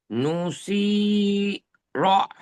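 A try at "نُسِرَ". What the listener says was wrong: টান দেবেন না, হারাকাতের পড়া, হারাকাতের পড়া টান হয় কি? পেশ নু হারাকাত, সিনজের সি হারাকাত, র জবর র হারাকাত, তাহলে তেমন ভাবে পড়েন। দেখেন এটাও হারাকাত।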